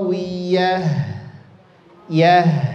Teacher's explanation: Ta marbut di akhir ngalirkan menjadi huruf ha